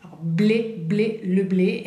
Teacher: tenemos la B, que viene labial, como la P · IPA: [e]